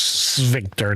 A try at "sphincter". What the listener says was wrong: There's no V.